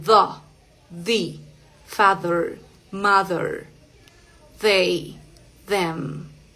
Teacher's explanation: la lengua un poquito entre los dientes y vibran las cuerdas vocales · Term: th sonora